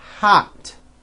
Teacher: are spelled with an O but are pronounced as aa so even though these words that I'm about to show you are all spelled with an O we pronounce all of these vowels with an AH here we go hot you see it's not hot it's ah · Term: ah sound